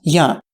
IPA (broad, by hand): ja